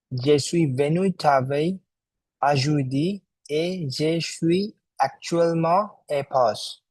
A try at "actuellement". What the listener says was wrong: Let's refine actuellement. Make the L sound lighter, like actuel. Je suis venu travailler aujourd'hui et je suis actuellement en pause.